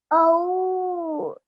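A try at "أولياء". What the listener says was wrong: It was all said nicely, but this needs to be extended a lot longer, so 4 seconds at least.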